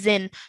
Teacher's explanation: you didn't elongate the nasal sound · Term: tanween